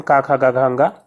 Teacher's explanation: कंठ में जो है का वर्ग के सारे व्यंजन आ जाते हैं।